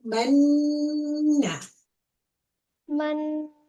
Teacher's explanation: you hold the sound in your nose for 2 counts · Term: gunna